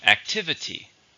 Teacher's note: How many syllables are in activity? There are 4. Stress on the second.